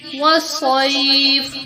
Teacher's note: صاد کو پر کرتے ہوئے پڑھنا ہے، سین جیسی باریک آواز نہیں آنی چاہیے